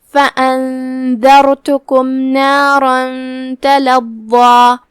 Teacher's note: ضا کی ادائیگی زبان کے سر اور اوپر والے دانتوں کے اندرونی کناروں سے ہے لیکن ضاد حروف تفخیم میں سے ہے تو ہم اسے بھاری آواز میں پڑھیں گے